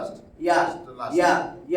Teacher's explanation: জিম শিন ইয়া তিনটা জিহ্বা মধ্যভাগ উপরে তালুর সঙ্গে লাগাইয়া মজবুত করে শক্ত দৃঢ়ভাবে বলতে হয়